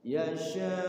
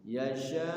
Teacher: maksudnya itu panjang itu panjangnya lima ketukan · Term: mad wajib